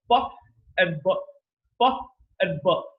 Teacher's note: So when you utter these two sounds, when you utter pa and when you again utter b, so in case of b, you'll feel that there's a lot of vibration occurring. In case of pa, that vibration isn't there.